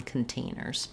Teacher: stressed on the tain syllable, true T on containers